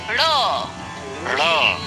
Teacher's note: ड़, ये द्विगुण व्यंजन है। इन्हें उत्क्षिप्त व्यंजन भी कहते हैं। इसका उच्चारण भी मूर्धा से होता है।